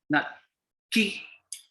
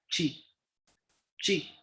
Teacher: it is usually sounded like CH with a curling of your tongue as you pronounce it